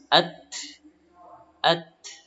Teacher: huruf ta, ujung lidah bertemu dengan gusi atas.